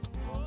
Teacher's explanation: every syllable is pronounced for roughly an equal amount of time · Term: syllable-timed language